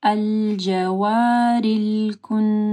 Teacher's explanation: نون کے اوپر شد ہے، ٹھیک ہے، یہاں پہ غنہ ہوگا